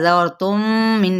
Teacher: जाल को रा के साथ मिलाएंगे, रा पुर पड़ा जाएगा